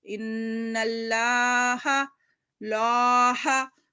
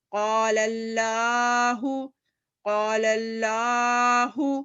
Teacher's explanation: موٹا پڑھ رہے اپنی زبان کو اوپر کی تالو کی طرف لگانے کی کوشش کر رہے ہیں. قاف الف زبر قا لام زبر لل قال لام کھڑا زبر لا ہا پیش ہو قال اللہ سین زبر سا میم زیر می سمی عین لام زبر ال سمی لام کھڑا زبر لا ہا پیش ہو سمیع اللہ.